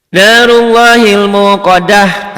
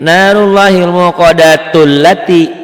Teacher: Narullahil muqaddah tamar butoh dihentikan jadi ha. Ini karena berhenti di sini maka di sini bunyi jadi a, alati.